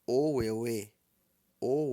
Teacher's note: é o meu mês então pronuncia-se ou ou o o o o é baixo e o eu é médio não precisa subir o Tom